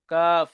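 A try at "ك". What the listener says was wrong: ক্যাফ 3 আলিফ টান দেন। কাফ কাফ 3 আলিফ টান দিতে হবে। ক্যাফ।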